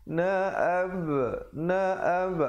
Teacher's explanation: Na'ab, na'ab ada pantulan kholkholah di situ.